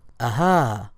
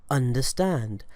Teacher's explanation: The sound that the hamza produces is what is known in the grammatical world as a glottal stop. Put simply, it's that sound that we find in English words that begin with vowels, like the sound in the word aha, or the sound in the word understand, or the I sound in the word igloo.